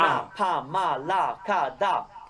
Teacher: it doesn't matter what consonant you put before or after, it's going to be A.